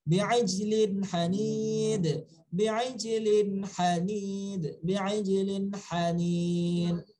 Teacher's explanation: Ha dari wastul halqi, huruf ha tebal.